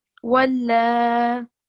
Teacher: when we're doing a waqf, we still say walla for 2 seconds. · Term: vertical fatha